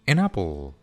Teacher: An termina con la consonante N y apple empieza con la vocal A. Entonces simplemente las unimos.